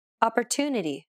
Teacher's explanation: The stressed syllable to in opportunity is pronounced longer than all the other syllables. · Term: stress-timed